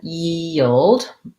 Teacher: it's a glide from the e to the uh and then i have to go back to my e which is what makes it tough so yi yi and then · Basically, I have a dark L there. It has a little bit of a schwa before it. And then I have to go to the D.